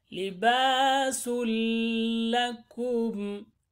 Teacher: Libasun, since we have sa to dhamma here, tanween, after that lam from your malun, we connect seen with the lam